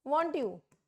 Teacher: and then I am confirming the same in polite way, falling tone